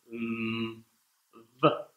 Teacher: to do the V sound, the bottom lip goes under your upper teeth, v, and you vibrate your vocal cords and do the same thing you would do for F.